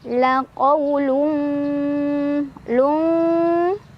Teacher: Karena ada tanwin dhammah bertemu huruf fa. Cara bacanya disamarkan tanwinnya sambil berdengung. Nah, untuk huruf fa, tingkat kesamaran dan dengungannya seimbang ya, karena huruf fa tidak terlalu dekat, tidak terlalu jauh dengan tanwin atau dengan huruf nun ya. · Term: ikhfa ausat